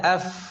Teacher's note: keduanya sama-sama dari bibir Ya hanya saja untuk bibir bawah saja bukan kedua bibir